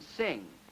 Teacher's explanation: that sound I've already talked about, the last sound in sing, a velar nasal